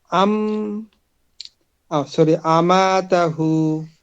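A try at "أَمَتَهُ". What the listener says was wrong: এখানে মোদের হরফ কোনটা বলেন তো। মোদের হরফ। খালি আলিফ, তাহলে কিভাবে হবে, এক আলিফ টানতে হবে, টান দেন বলেন। আমাতাহু।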